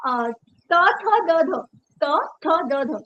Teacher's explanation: जीभ जो है वो त थ द ध दांतो को लग रही है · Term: दंतव्य